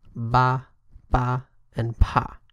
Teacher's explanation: So the first one, B, Ba, is similar to the English B. It's voiced.